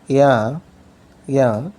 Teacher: the front part of the tongue moves toward hard palate